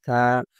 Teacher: জিহ্বার আগা দাঁতের আগার সাথে মিলায় দিতে হবে নরম করে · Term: সা হরফ